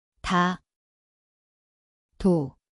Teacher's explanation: 디귿, See kõlab nagu tee koht on keeleots, vabastatud.